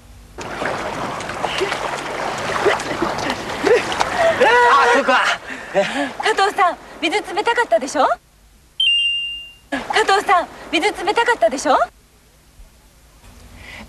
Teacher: did your ears pick up the fact that it ended with a rising intonation